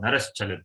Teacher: Now the Sakara undergoes further changes depending on what follows. The following letter is Chakara, which is palatal. Therefore, Sakara becomes Shakara, Talavi Shakara. Therefore, Naras Chalati you get.